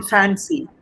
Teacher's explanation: It's the lower lip and the upper teeth, right? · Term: labial